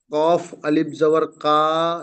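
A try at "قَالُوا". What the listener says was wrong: কা নয়, আলিফ জাবার হয়ে যাবে। কফ আলিফ জাবার কা হয় না, কফ আলিফ জাবার ক হয়।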